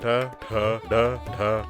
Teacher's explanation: ಮಡಿಚಿದಾಗ ಹುಟ್ಟುವ ಮೂರ್ಧನ್ಯ ರೆಟ್ರೋಫ್ಲೆಕ್ಸ್ ಎಂಬ ಧ್ವನಿಗಳು